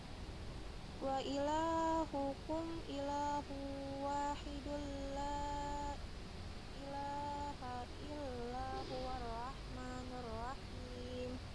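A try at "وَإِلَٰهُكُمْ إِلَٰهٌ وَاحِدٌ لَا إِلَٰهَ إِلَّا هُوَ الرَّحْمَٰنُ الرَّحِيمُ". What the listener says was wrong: Nah, kalau bisa seperti yang tadi sudah bilang, jangan sampai terputus di tengah ya. Kalau mau disambung juga bisa. Wa ilahukum ilahu wahidul la ilaha illa huwar rahmanur rahim.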